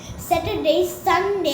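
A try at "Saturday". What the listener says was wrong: স্যাটার আর হবে না, হ্যাঁ, আর উচ্চারণটা উচ্চ থাকলে সুন্দর লাগবে। স্যাটারডে। সানডে।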